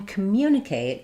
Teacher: in communicate we actually stress on the mu syllable. So, that's a good one to look at because we have the M and Y sounds together.